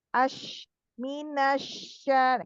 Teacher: Nah, kalau huruf ya dan shin itu dia tidak menempel sempurna, makanya ada beberapa sifatnya. Kalau huruf shin itu ada anginnya banyak ya, itu udara berhembus namanya sifat tafashi. Hanya dimiliki oleh huruf shin.